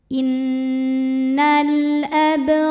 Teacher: cara membacanya kita pantulkan bnya dengan pantulan yang kecil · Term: Qalqalah Sugra